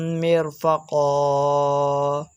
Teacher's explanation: زبر کی تنوین کو وقف کی حالت میں الف سے بدل کر پڑھا جاتا ہے